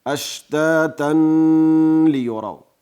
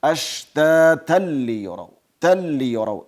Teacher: دلته به غنه نه ورسره کو، داسې به نه وایو اشتاتا لیروا بلکې اشتاتا لیروا تل لیروا ادغام شته ده خو غنې صفت نشته. لیروا اعمالهم لیروا را زور لري ډکه تلفظ کیږي، واو معروف تلفظ لیروا شونډې راغونډې سي. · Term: ادغام کامل